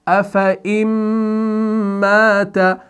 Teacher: اس نون ساکن کے بعد جب میم مشدد کو دیکھتے ہیں تو یہاں پر آپ کا ایک قاعدہ ہو جاتا ہے ادغام مع الغنہ